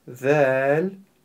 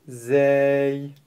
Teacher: Буква «Зэль» межзубная, а буква «Зэй» мы не ставим кончик языка между зубами.